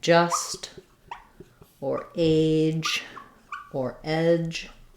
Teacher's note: one sound uh but two symbols because just like the CH it moves from the position of the D to the position of the Z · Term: affricate